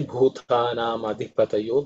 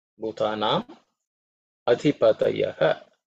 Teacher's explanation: This visarga becomes o because of sandhi.